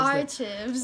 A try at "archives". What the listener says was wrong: Archives. It's archives. I know, and then you went with chives. Like it's some kind of seasoning for a baked potato.